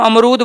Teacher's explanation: जो रू है उस पे हम बलाघात कर रहे हैं।